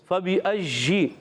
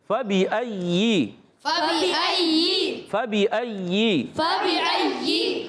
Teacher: یا مشدد ذرا رک کر ادا کریں گے، فبی اجی نہیں کریں گے۔